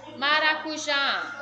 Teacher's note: sílaba forte está na última oxítona